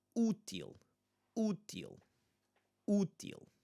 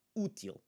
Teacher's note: But IL would be the accentuated syllable. We want to make sure that the first syllable is the one that we are emphasizing.